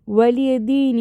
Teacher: தால் கெஸ்ரா யா சுக்குனுக்கு 2 counts கொடுத்துக்கோங்க. வலிய தீன். இங்கேயும் தால் கெஸ்ரா யா சுக்குனுக்கு 2 கவுண்ட்ஸ் கொடுத்துக்கோங்க.